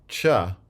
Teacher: it does start with a stop and then changes into a fricative in the course of this segment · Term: affricates